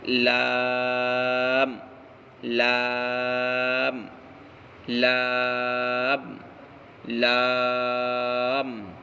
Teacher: لام کا مخرج زبان کا کنارہ اور اوپر کے دھاڑوں کے مسوڑے سے لام ادا ہوتا ہے